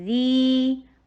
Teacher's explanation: یا ساکن، اس سے پہلے والے حرف کے نیچے کسرہ، یا ساکنہ قبلہا مکسور، تو دال ہو دال ہو پیچھے کوئی بھی لفظ لیٹر ہو کوئی فرق نہیں پڑتا، لیکن بس یا ساکن ہو اور اس سے پہلا کوئی بھی حرف ہو جائے، اس کے نیچے کسرہ آ جائے تو اس کو لانگ کرتے ہیں، 2 حرکہ پڑھتے ہیں